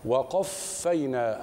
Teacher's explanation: احرس على الهمس في حرف الفاء وقبله ارقق الواو والقاف من بعده